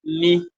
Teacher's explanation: you feel your nose there's vibration in your nose